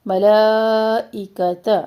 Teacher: ساکن نہ ہلے، ملائکۃ، یہاں پہ مد کر رہے ہیں، مد متصل کر رہے ہیں، اور مد متصل کو طول کے ساتھ پڑھتے ہیں